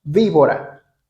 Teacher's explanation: B sounds like V like using your lips uh and your teeth and putting your tongue between uh before your teeth and you apply all all those three at the same time.